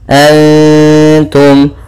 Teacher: kita samarkan suara nunnya kepada huruf ta. Antum. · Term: ikhfa hakiki